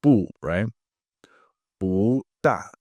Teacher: 不大. So it changes from a fourth to the second tone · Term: Tone change rules